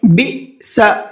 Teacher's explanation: بِئْسَ، یہاں پر حمزہ ساکن ہے اور حمزہ ساکن کے پڑھنے میں جھٹکا ہوتا ہے، جھٹکے سے پڑھتے ہیں